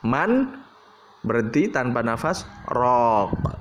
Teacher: Bacanya harus man, berhenti tanpa nafas, raq, ya, nggak boleh marraq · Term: saktah